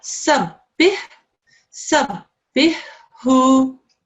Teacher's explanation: That ha has also got to join on to the ba.